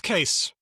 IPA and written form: keɪs (Cayce)